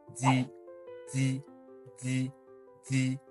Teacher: with D, all that we did was a little vibration, a little a bit of air, and that was it.